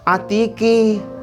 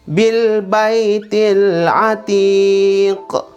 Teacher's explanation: Oh, ini qalqalah, tidak boleh dibaca atiqi. Ki harus dibaca atiq.